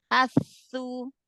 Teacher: Alirkan suara sama nafasnya. Sa yang tasdid, yang sukun pertama dialirkan.